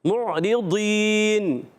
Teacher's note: عین کے ادائیگی الگ کے درمیان والے حصے سے. را کے نیچے زیر آنے کی وجہ سے را باریک ہو جائے گا. یہاں ہے ضاد, حرف ضاد کو صحیح پڑھنا ہے, غلط نہیں پڑھنا. · ایسا محسوس ہوتا ہے کہ دال کو تھوڑا سا موٹا کر کے پڑھا جا رہا ہے